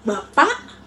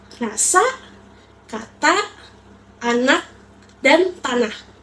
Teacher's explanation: bunyi vokal A dianggap paling nyaring karena saat diucapkan posisi mulut terbuka lebar sehingga ruang lensonasinya luas.